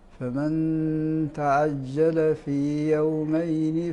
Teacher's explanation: النون الساكنة قبل حرف الإخفاء الذي هو التاء هذه مخفاة